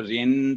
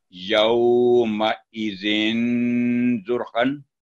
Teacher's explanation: ہے کہ لائٹلی اس کو آپ گنہ کریں یوم ازن زرخن آپ کو ناک میں گونج باقاعدہ محسوس ہوگی اسے کہتے ہیں گنہ کرنا